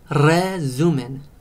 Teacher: when it is the first letter in a word it is strong and it makes a roll R